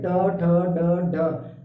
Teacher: ट ट बोलते समय क्या हो रहा है? जीभ मुड़ जा रही है। ट ठ ड ढ, जीभ मुड़ रही है ना। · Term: मूर्धन्य